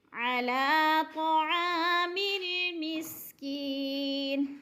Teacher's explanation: مسکی کی یا کو لمبا کرنا ہے، یا ساکن سے پہلے کاف کے نیچے زیر ہے تو ایک الف کے برابر یا مدہ کو لمبا کر کے یعنی کھینچ کے پڑھنا ہے۔